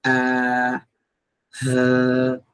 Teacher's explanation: Huruf hamzah dengan huruf ha duduk kat bahagian pangkal bawah sekali.